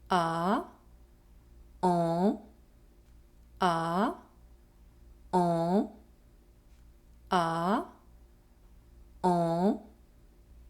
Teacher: The lips are slightly rounded and the mouth is well opened. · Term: Nasal vowel en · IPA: [ɑ̃]